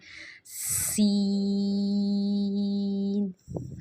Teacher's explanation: سین کو پڑھتے ہوئے سیٹی کی آواز آنی چاہیے